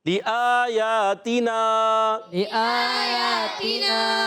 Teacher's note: آخر میں نون الف زبر نہ آ گیا، ایک الف کھینچ کر ادا کریں گے